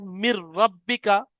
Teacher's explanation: নুন সাকিনকে রর সাথে মিলিয়ে বিনা গুন্নায়, অর্থাৎ গুন্না হবে না, বিনা গুন্নায় তাড়াতাড়ি পড়তে হয় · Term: ঈদগামে তাম